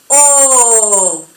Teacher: Si tiene el acento agudo, va a ser más larga, O, va a ser mucho más abierta.